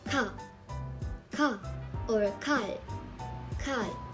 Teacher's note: Kiek, pronounced as k, similar to the English k but more aspirated